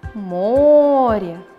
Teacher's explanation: ударение падает на первый слог